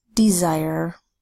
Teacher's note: The S is in the middle of the word between two vowels, and it's making the Z sound.